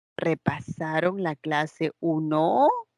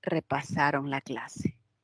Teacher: en el último el tono es ascendente